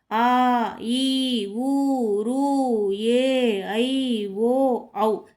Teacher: ఇవి 2 మాత్రల కాలంలో పలికే అచ్చులు. ఇవే దీర్ఘాచ్చులు.